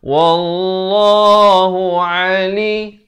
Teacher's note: Bukan a. Kalau a jadi hamzah. Di sini huruf ain.